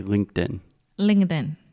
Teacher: when we say it a little bit faster, that T gets a little bit softer and faster. So if I'm speaking normally, like at a conversational speed, I will say LinkedIn. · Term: stop T